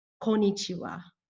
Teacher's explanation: Konichiwa does not have five syllables as you can see it only has four and it is missing the first N